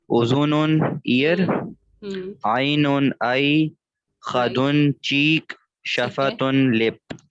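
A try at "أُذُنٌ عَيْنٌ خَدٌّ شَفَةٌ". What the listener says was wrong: शाबाश.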